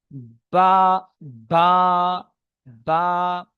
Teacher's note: 16 নম্বর মাখরাজ দুই ঠোঁটের ভিজে অংশ হতে উচ্চারিত হয় বা, তাহলে দুই ঠোঁটের ভিজে অংশ, ভিতরের এটা আর এই উপরে এটা, বা, বা, বা।